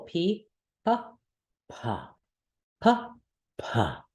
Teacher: the pH version should make a little explosion of hot air into the palm of your hand and we do both in English we aspirate or don't aspirate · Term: aspiration